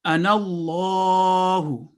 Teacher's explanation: اللہ لام جلالہ اس لیے تھک پڑھا